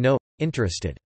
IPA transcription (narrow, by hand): noʔ interested